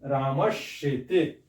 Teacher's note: या च चव की कोई ध्वनि आए तो क्या होता है दंत स बदल जाता है तालव्य श में